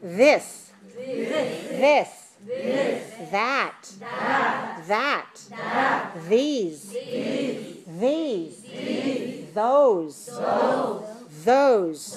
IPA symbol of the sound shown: ð